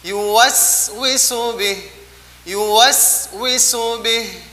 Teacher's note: maka posisi as-safir ketika dia disukun maka lebih terasa lagi desisnya.